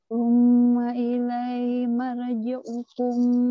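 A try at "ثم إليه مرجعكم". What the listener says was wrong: Thumma ilaihi. Hinya ketinggalan.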